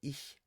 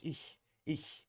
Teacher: between closed vowels like ich, um, you'll have the unvoiced ch.